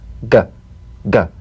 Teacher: the voiced tongue back plosive consonant G place the back of the tongue in gentle contact with the soft palate let the tongue spring away